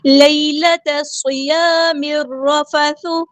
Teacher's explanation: لیلۃ الصیام الرفث، یا لین آئیے نرمی سے موڑیں گے، یا ساکن اس سے پہلے زبر ہے، تا کو ہم صاد کے ساتھ ملا دیں گے، حمزۃ الوصل ہمارا ڈراپ ہو جائے گا، لام یہاں پہ لام شمسیہ ہے، اس کو ہم ظاہر نہیں کریں گے۔